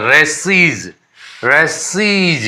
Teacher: फुफकारने जैसे, भिनभिनाने जैसी आवाज आ रही है। तो इसको हम क्या कहेंगे, सिबिलेंट साउंड कहेंगे।